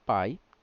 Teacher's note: e a semivogal que é mais fraca vem depois aqui pai o a vem primeiro e o i vem depois que é semivogal · a vogal ela é mais forte vem antes e a semivogal que é mais fraca vem depois aqui pai o a vem primeiro e o i vem depois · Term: decrescente